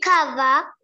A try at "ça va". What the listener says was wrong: Sava. It is not cava. Sava. Ça va.